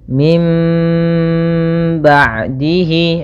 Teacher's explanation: suara nunnya menjadi suara mim. Jadi yang kita baca dalam yang atasnya, kemudian kita tahan suara m-nya 2 harokat. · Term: iklab